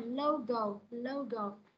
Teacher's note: Nó sẽ xuống giọng cái âm thứ hai